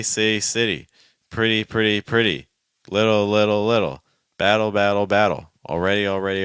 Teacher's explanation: let's just do a fast D sound 3 times for all these words, trying to keep the fast D very weak